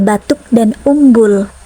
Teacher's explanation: dengan ciri agak tinggi belakang dan bulat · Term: u tertutup